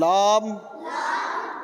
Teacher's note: कनारा जबान मसूड़े से मिलकर मसूड़े से मिलकर लाम अदा होता है